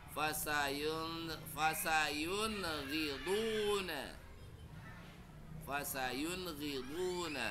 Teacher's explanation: Satu ketuk, pendek dan jelas bunyi nun sukunnya.